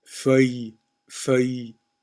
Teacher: The ILLE actually just creates one sound together, and that is y